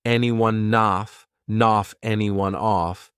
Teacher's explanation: Off starts with a vowel, and anyone it ends on an N sound. So I can take that N and just add it in front of the vowel.